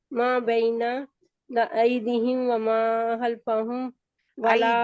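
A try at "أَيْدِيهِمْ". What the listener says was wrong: ایدیہم دال کو لمبا کریں کیونکہ مد لیٹر ہے.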